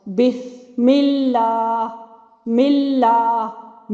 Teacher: जब इसके पहले वाले हरफ के नीचे कसरा होगी, जेर होगी, जैसे कि तस्मिया में होता है बिस्मिल्लाह मिल्लाह। मीम के नीचे कसरा आ गई और आगे लामे इसमें जलाला का लाम बारीक हो गया